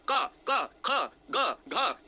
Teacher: ये दोस्तों ये गले से आ रहे हैं, इसलिए इनका नाम कंठ पड़ा